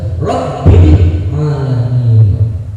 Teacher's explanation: Jadi ba-nya itu harus kelihatan karena ba-nya itu termasuk huruf qalqalah.